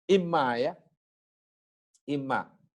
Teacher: Itu aslinya in dan ma. Kemudian diidghamkan, nunnya masuk pada mim jadi imma